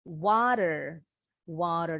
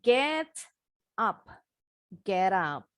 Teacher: the T is placed in the middle between the 2 vowel sounds. The T sounds like a quick D. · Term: flap T